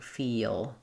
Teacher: When I say feel, it's one syllable, but it almost sounds like two. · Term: dark L